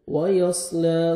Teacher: صاد کو موٹا کر کے پڑھیں گے